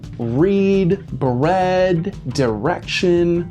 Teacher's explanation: the r sound is strong just like america's when it comes before a vowel